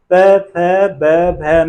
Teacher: प फ ब भ म उच्चारण कर रहे हैं तो क्या पा रहे हैं, जो दोनों ओष्ठ हैं वो आपस में मिल रहे हैं। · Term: ओष्ठ ध्वनियां